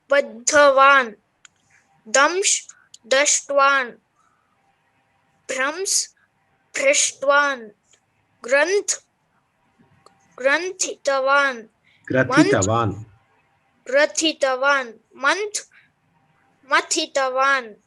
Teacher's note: nakara or anunasika akshara is gone in the tavatu pratyaya